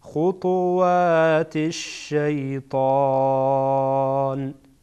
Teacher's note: اگر اینجا وقف کنیم میگین خطوات الشیطان، حرکت اخیر را میاندازین